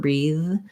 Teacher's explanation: breathe has the voiced th so i just need to leave my voice on